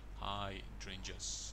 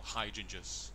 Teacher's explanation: it's hydrangeas, and the stress is on the second syllable, hydrangeas.